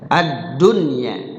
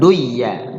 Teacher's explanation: dibaca idhar, nunnya dibaca jelas ya, ad-dunya bukan duya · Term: idhar mutlak